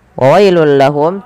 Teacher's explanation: tanwinnya masuk ke huruf lam karena ia idgham bila gunnah. Adanya tanwin bertemu dengan huruf lam, masukkan ke lam.